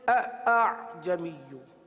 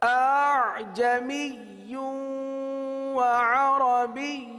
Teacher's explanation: پہلے حمزہ کو تو تحقیق کے ساتھ ادا کرنا ہے لیکن دوسرے حمزہ کو نرم کر دینا، یعنی اس کی تحقیق ختم کر دینی ہے. تحقیق ختم ہو گئی، تحقیق جب ختم ہو گئی تو اس کے اندر نرمی آ گئی. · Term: تسہیل